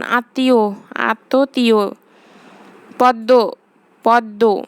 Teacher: পদের মধ্যে বা শেষে ম ফলা যুক্ত হলে উচ্চারণে সে বর্ণের দ্বিত্ব হয় এবং সামান্য নাসিকস্বর হয়